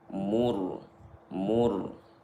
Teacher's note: mim dhammah berjumpa ra sukun, maka ra sukun dibaca tebal. Mur, mur, karena sukun setelah dhammah.